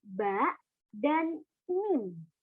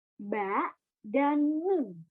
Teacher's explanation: makharijul huruf yang keluar dari asyafatain atau kedua bibir yang keluar dari 2 bibir mengatup